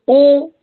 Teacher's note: आप बोल के देखिए, अगर ओ बोल रहे हैं आप तो कंठ और ओष्ठ का ही प्रयोग हो रहा है। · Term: कंठ ओष्ठ